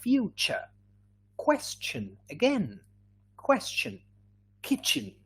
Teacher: kitchen is voiceless we don't feel any vibration